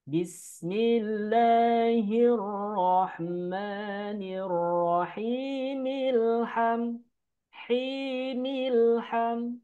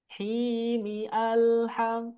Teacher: Tapi hamzahnya diabaikan. Langsung ke bunyi al. Apabila bismillah sama alhamdu digabungkan. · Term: hamzah wasol